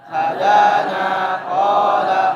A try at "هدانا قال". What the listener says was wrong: Panjangkan. Hadana qala.